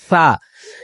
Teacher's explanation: সা যেটা অনেক হালকা এবং পাতলা করে হবে, ঠোঁটের আগা থেকে উচ্চারিত হবে, যে সা, সেটাকে সিনের মতন করে পড়ে।